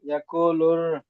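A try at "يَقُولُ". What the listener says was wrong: ওখানে টান হবে, লুর, লুর, টান হবে না। ইয়াকু লুর।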